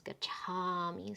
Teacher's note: preceding the ma and the va endings, the a gets lengthened if the dhatu ends with an a. So this is gacha, and then when you tack on the ending, it becomes gachami.